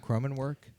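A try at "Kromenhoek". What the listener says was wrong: No, it's Cromenhook, I believe. I don't think there's a W in there.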